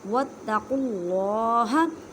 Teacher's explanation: اللہ کے لفظ کو موٹا پڑھیں کیونکہ اللہ کے لفظ سے پہلے پیش ہے